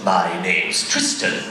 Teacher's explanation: he has that down and up and then down at the end